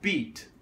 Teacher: if you have an unvoiced consonant after it like a T and you have a word like beat it tends to be a shorter vowel because your voice is basically cutting off faster to try to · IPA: ĭ t